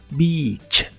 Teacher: La palabra beach siempre se pronuncia con una I larga y doble que suena muy clara. Beach. No la pronuncies con la I corta porque es otra palabra que no quieres decir.